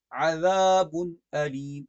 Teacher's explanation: عذاب پر غنہ نہیں ہے کیونکہ تنوین کے بعد حمزہ ہے